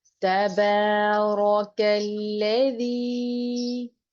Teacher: زبان کی نوک اوپر کے سامنے کے دانتوں کے سروں سے ٹچ کرے گی، شدت نہیں ہوگی